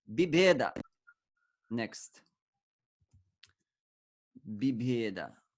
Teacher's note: The first part of it, bhi, is put in front, and then the bha turns into normal ba